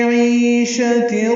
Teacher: عی یا مدہ ہے، دو حرکات لمبا کریں گے